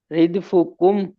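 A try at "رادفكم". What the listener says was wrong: یہ ردفکم نہیں ہے، رادفکم، رادفکم،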